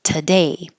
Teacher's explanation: The to changes to ta, and the duration of the vowel gets much shorter.